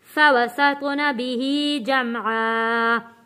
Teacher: سط یہاں پہ حروف قلقلہ ادا کریں گے. فوسط سط آواز پلٹ کر آئے گی